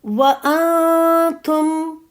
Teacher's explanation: نون پر پھر اخفا ہے، آواز میں نے چھپائی